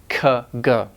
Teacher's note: Alright, so the soft tissue way back there. The back of the tongue is raising towards the velum, and it's blocking the airflow. · the back of the tongue kinda raises up and touches the velum or the back of the mouth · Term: velars